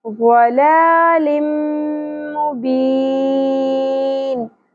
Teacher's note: ضاد حروف مستعلیہ میں سے ہے، پر ہوگا، لام کے اوپر کھڑی زبر ہے، ایک الف کے برابر کھینچنا ہے.